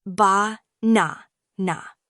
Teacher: in the word banana, the stress falls on the second syllable